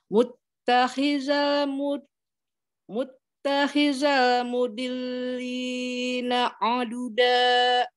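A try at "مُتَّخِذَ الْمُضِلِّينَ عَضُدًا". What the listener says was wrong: Zanya coba za. Iya, jangan za. Itu tadi kedengarannya kayak za.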